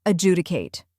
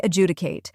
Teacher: Next is ju, which rhymes with you and is stressed.